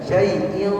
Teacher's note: terangkatnya pangkal lidah ke langit-langit. Jadi diangkat lidahnya makanya dia tebal cara membacanya. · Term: huruf tebal